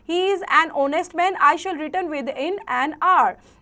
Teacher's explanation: since h remains silent and the pronunciations come out as like honest or our